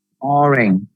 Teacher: in the word orange the stress is on the first syllable